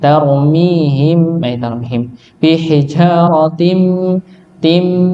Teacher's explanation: Hukum nun sukun disebut sebagai idgham bi ghunnah. Tanwin bertemu dengan mim, ya, karena tanwin termasuk pada nun sukun. Maka ditahan, didengungkan, masuk dengan ditahan, masuk ke mim. Tarmihim bihijaratim, tim masuk dulu baru didengungkan.